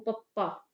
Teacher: ਪੂਰੇ ਲਿਪਸ ਆਪਸ ਦੇ ਵਿੱਚ ਜੁੜ ਕੇ ਇੱਕ ਵਾਰੀ ਸਾਹ ਦੀ ਹਵਾ ਰੋਕੀ ਹ ਫਿਰ ਛੱਡੀ ਗਈਹ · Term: ਹੋਠੀ ਧੁਨੀਆਂ